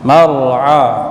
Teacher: أخرج المرعى ya, jangan dibaca mar, bukan mar tapi mar. Mar'a, a di tengah tenggorokan